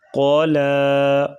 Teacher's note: قاف زبر قا، لام کھڑا زبر لا، قالا، قاف کو موٹا کریں گے اور لام کو باریک پڑھیں گے